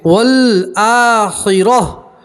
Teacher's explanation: रा के ऊपर ज़बर है, रा को पूर पढ़ेंगे, मोटा पढ़ेंगे।